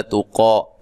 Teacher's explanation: تا کو باریک، قاف کو موٹا، مد اصلی ہے